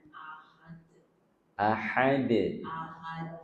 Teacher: Ini tinggal huruf dal jangan ada anginnya, ya. Udara dal dia tidak mengalir udaranya. Ya, jangan ada udara yang dialirkan ahad.